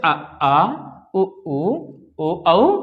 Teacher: जिन स्वरों का उच्चारण करते समय जिह्वा मुंह के पश्च भाग में रहती है उन्हें हम पश्च स्वर कहते हैं।